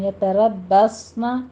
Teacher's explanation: بس رو بھی پر ہے، آگے باقی پر تشدید ہے، اور صاد کو کیا کرنا ہے، سیٹی کی آواز کے ساتھ پر پڑھنا ہے